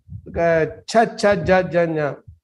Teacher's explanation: And then cha cha ja ja nya, that is talavya, that is palatals, that touches the palate inside